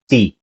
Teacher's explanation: in ilocano it's not aspirated so it's t no air expelled from the mouth